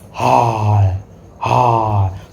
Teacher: स्वर तंत्र मींस ह को जब हम लोग बोलते हैं तो स्वर तंत्रियों में कंपन होता है।